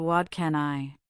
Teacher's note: In fast speech, what can I often blends into what can I? The T sound in what becomes a soft D because it's followed by can. This is called assimilation.